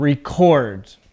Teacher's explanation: Your voice goes up at the second part of the word as a two-syllable verb.